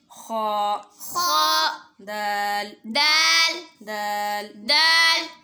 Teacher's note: زبان کی نوک اوپر یعنی سامنے والے جو 2 دانت ہیں اس کی جڑ سے لگے گی تو دال ادا ہوگا